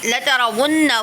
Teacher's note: ون پہ نون مشدد ہو رہا ہے، ٹھیک ہے، ون پر غنہ کریں گے